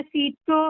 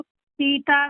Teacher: ਪਹਿਲਾ ਸੀਤੋ ਕਸ ਕੇ ਦੂਜਾ ਸੀਤਾ ਪੋਲਾ